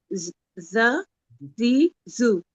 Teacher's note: हर बार start करते वक्त जबान दांतों के बीच में होगी, मतलब जबान की नोक, ऐसी पूरी जबान नहीं, जबान का जो शुरू का आगे का हिस्सा है वो। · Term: ज़ाल